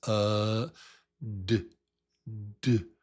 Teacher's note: The tongue taps with the voice. It has to have some voice.